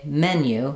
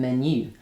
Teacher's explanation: a simple word like menu in French is stressed on the second syllable. In English is stressed on the first syllable.